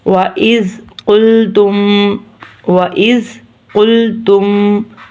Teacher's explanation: قاف موٹا ہے، موٹا قاف قلقلے والا، اس کو ہم نے موٹا پڑھنا ہے۔